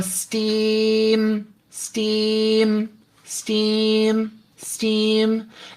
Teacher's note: And then I'm going to like fake myself out and go steam, steam, steam, steam, and introduce the M at the very end and see if I can hold on to the non-nasal steam for as long as I can